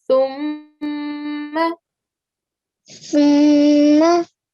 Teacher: So with the th, we get the tip of our tongue and we place it between our top and bottom teeth, but we're touching the edge of the top teeth. And when we are saying th, a bit of air is escaping our mouth as well